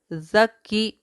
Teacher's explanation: کاف، کاف زبان کی جڑ سے ادا ہوتا ہے۔ کاف پر تشدید اور زیر ہے۔